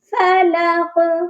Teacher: جب قاف پر ہم رکیں گے، قاف سائلنٹ ہو جائے گا یعنی ساکن ہوگا، تو اس پر قلقلہ بھی لازمی ہوگا